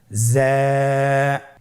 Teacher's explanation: উচ্চারণ করার সময় অবশ্যই এক আলিফ টেনে পড়তে হবে, এক আলিফ টেনে পড়তে হবে। হরফটি বারিক হরফ, এই জন্যে পাতলা করে উচ্চারণ করতে হবে। যা হরফটির মাখরাজ আপনারা দেখতে পাচ্ছেন, জিহ্বার আগা সামনের নিচের 2 দাঁতের পেট ও আগার সঙ্গে লাগিয়ে উচ্চারিত হয়।